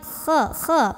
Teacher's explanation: pangkal lidah naikin, keluarnya dari tenggorokan paling atas.